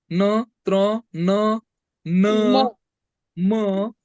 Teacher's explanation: अनुनासिके म्हणजे नाकाद्वारे उच्चार होतोय त्यांचा, म्हणून त्यांना अनुनासिके असे म्हटले जाते.